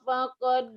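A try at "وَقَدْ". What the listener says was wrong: Wakod bukan pakod.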